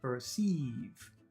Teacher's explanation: First one is short, per. Second one is very long, sieves.